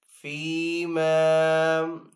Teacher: یہاں پہ یا مدہ ہے اور یہاں پہ الف مدہ ہے، تو دونوں کو ایک الف دو حرکات کے برابر کھینچ کر ادا کریں گے